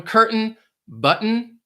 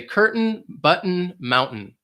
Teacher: you don't really hear that T sound